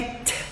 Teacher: Então, o primeiro erro muito cometido é a letra T. O som verdadeiro em inglês de T é t. E não tch. O som é t, dando uma sopradinha.